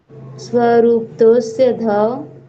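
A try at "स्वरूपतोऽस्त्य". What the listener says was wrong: तो स्त्य नहीं बोलना आपने, त भी बोलना है, स्त्य है ये, स्या नहीं है, त है इसके बीच में। स्वरूप तो, स्वरूप तो अस्ति, हाँ, स्वरूप तो अस्ति, अस्त अस्त्य तोस्त्य, स्वरूप तोस्त्य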